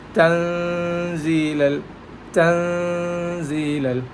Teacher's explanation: Ikhfa means we have to unclear the noon and give gunna.